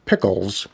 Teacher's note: So if you put your hand up in front of your mouth and say pickles, you'll probably feel a little puff of air come out of your mouth as you say that P sound